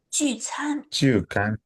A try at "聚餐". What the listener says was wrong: 餐. 聚餐. Yeah, it's not can, by the way. It's 餐.